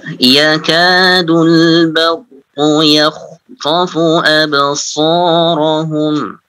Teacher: qaf tebal, kha tebal, ta tebal. Ya, ada 3. Absarahum juga sadnya tebal juga.